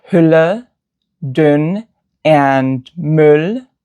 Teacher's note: It's a near-high, near-front rounded vowel.